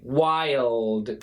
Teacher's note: this basically sounds like while, but it's actually two syllables. It's an I-L, like a diphthong.